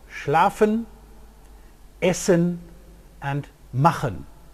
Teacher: After vowels, the three plosives, the voiceless plosives p, t and k, became fricatives. Labiodental fricative f, alveolar fricative s, and velar fricative ch.